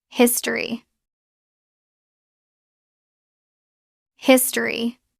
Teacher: Natural pronunciation. Drop the O. It becomes his tree. Two syllables.